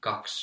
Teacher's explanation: In spoken language you can hear the I dropping out. Kaksi. But kaks or kaksi in the standard language.